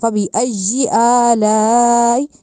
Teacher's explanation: ایجی یا کے اوپر شد ہے، اس کو اس طرح کر کے پڑھنا ہے کہ سختی سے شد کی جائے